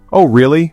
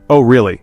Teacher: if I say, oh really, with a rising intonation, it sounds like I'm genuinely curious or surprised. But if I say, oh really, with a flat, falling tone, it sounds sarcastic or dismissive.